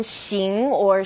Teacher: this sound is somewhere in the middle of sh and S